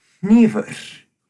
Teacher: you can hear me breathing out of my nose at the front of that word · The curious thing about the voiceless N, though, is that it is literally just breathing out of your nose.